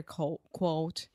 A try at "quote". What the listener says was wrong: Quote. Quote. Yeah. First, you just completely say coat.